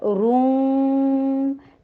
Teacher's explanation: ہونٹوں کو گول کیجیے اور واو کے ساتھ ملائیے اور غنہ کے ساتھ مل رہا ہے، روم. ٹھیک ہے، واو کے پر فتحہ، جبڑے کو گول کیجیے، ساری جبڑے کو گول نہیں کر سکتے، ہونٹوں کو گول کیجیے.